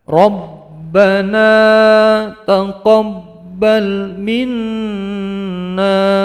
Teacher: Yang nun bertasdid mendengung, panjang 2 harokat.